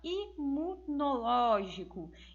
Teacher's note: nós vamos perceber que o ló é a sílaba tônica, também sendo que a antepenúltima sílaba tônica.